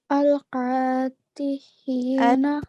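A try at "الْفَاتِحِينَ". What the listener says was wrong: Atihina. It's a fa. Al-Fatihina.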